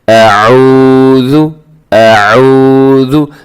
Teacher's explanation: اس واو ساکن سے پہلے جب پیش ہو تو واو کو لمبا کر کے پڑھا جاتا ہے، حرف کو لمبا کر کے پڑھا جاتا ہے کیونکہ یہ واو مدہ ہوتا ہے، اس سے تھوڑا سا لمبا کرنا چاہیے۔